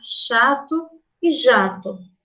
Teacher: jato oferece uma construção no trato na região do palato duro produzida com a parte anterior da língua em direção à região pós alveolar